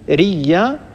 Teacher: بالتالي يعني قالون قرأ هكذا بالإبدال والإدغام. يعني رئي أبدل الهمزة ياء فصارت عندي ياء ساكنة وياء متحركة ثم أدغم الياء في الياء فصار النطق بياء واحدة مشددة